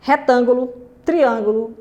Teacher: palavras proparoxítonas que a sílaba tônica é a antepenúltima